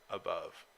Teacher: an unstressed syllable followed by a stressed syllable